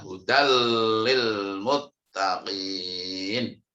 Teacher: tanwinnya itu masuk ke huruf lam tanpa ada dengung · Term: idgham bila gunnah